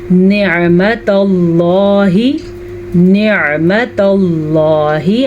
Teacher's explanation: نعمت اللہ، نعمت اللہ، عین کو واضح کریں اور لفظ اللہ کو پر کریں کیونکہ لفظ اللہ سے پیچھے والے حرف کے اوپر زبر ہے